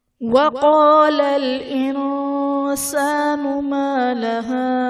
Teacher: وقال میں قاف حرف مستعلیہ پر پڑھا جائے گا، اور الف سے پہلے زبر ہے تو الف مدہ کا قاعدہ ہے۔